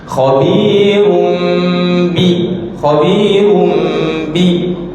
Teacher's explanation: Yang kelak maknanya taklid, menterbalikkan bunyi. Kita terbalikkan daripada bunyi tanwin kepada bunyi nun kepada bunyi mim.